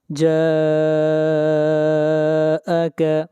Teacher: جا کے اوپر مد متصل ہے، اس مد کو 3 الف کے برابر کھینچ کر پڑھیں گے